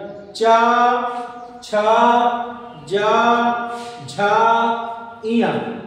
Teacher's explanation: जब आप ये च वर्ग बोलते देखिए आपकी जीभ तालु पे टकराएगी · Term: तालव वर्ग